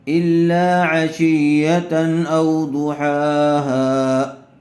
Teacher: تنوین کے بعد حروف حلقی میں سے حمزہ آیا ہوا ہے، اس لیے بغیر گننے کے جلد اظہار کر کے پڑھیں گے